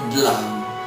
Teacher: Il piemontese toglie la finale, toglie quella in mezzo del e tiene dlan.